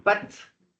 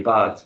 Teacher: mon voisin est court sur pattes, c'est un A fermé, mais on mangera non pas des pâtes, mais on mangera des pâtes, c'est un A ouvert